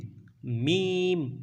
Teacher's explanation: दोनों होंठों के बैरूनी तरी के मिलने से मीम